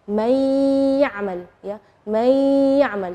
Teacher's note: May ya'mal, ya. Nunnya tidak jelas tapi ada suara dengung gunnahnya. May, jadi itu namanya idgham. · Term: idgham bi gunnah